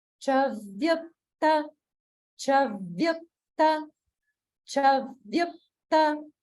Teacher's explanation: Also, it's a little bit tricky because the cha is on the lower swara and it goes immediately to an upper swara, the very next syllable. So that's a little bit tricky to get, but it sounds like chavyukta, chavyukta, chavyukta.